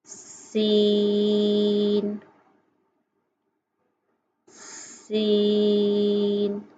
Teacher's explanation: جب ہم نے سین کے حرف کی ادائیگی کی تو آواز میں سے سیٹی کی آواز نکلی۔